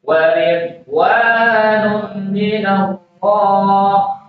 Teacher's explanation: Jangan dibaca qalqalah di situ, huruf dhad itu bukan huruf qalqalah.